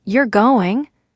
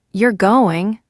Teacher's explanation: with a rising tone, it sounds like a question. But if you say, You're going, with a falling tone, it sounds like a statement